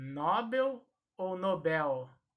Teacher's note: esta palavra é oxítona portanto a sílaba tônica será a última